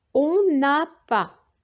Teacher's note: on fait la liaison entre le N de on et le verbe avoir